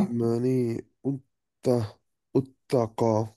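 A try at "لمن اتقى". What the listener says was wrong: লিমানি, এটা হামজাতুল ওয়াসল কিন্তু, রাইট? হামজাতুল ওয়াসল মানে হচ্ছে যে বাদ চলে যাবে কমপ্লিটলি, যেমন এইটার মধ্যে ছিল কানেক্টিং। এটা হামজাতুল ওয়াসল, রাইট? সো এটা বাদ কমপ্লিটলি।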